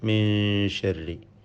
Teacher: സാക്കിനായ നൂനിനെ ഇഖ്ഫ ഹഖീഖി നൽകി അവ്യക്തമാക്കി മണിക്കേണ്ടതാണ്.